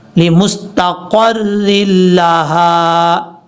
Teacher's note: را کو لام سے ملائیں گے بیچ میں حمزہ کو چھوڑ دیں گے